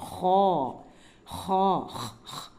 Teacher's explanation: மேல் தொண்டை இருக்கு இல்லையா தொண்டையிலேயே மேல் தொண்டை நடுத்தொண்டை அடித்தொண்டைன்னு இருக்கு அப்ப மேல் தொண்டை பகுதியிலிருந்து உயரமா நிக்க வச்ச மாதிரி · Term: ஹெவி லெட்டர்